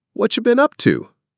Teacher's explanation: In fast, natural speech, what have you often gets squished together to sound like whatcha.